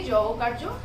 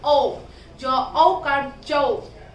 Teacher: औकार की मात्रा को थोड़ी शक्ति के साथ, थोड़ा आवाज के साथ, है ना, जोर के साथ इसका उच्चारण करेंगे। जो औकार, क्या बोलेंगे, औ, जो औकार जो।